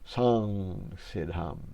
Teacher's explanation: that we have in French it's called a nasal uh where you say m but you don't finish the M you never close it it comes out your nose instead so it's a song Sid hum it's a nasalized vowel actually